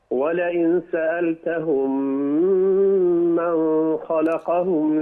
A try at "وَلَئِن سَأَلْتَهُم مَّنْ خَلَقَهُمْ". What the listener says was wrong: لا، من خلقهم؟ ما فيهاش غنى، دي إظهار حلق. ولئن، ركز على الإخفاء.